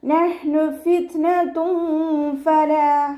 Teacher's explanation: ഹ മഖ്റജ് വരുന്നത് വസത്തുൽ ഹൽക്കാണ്, സൗണ്ട് വ്യക്തമാക്കി ഉച്ചരിക്കുക കേട്ടോ. കൽക്കല ലെറ്ററില്ലാത്തത് കൊണ്ട് ഹാഫ് സുക്കൂന് കൊടുക്കാൻ ശ്രദ്ധിക്കുക.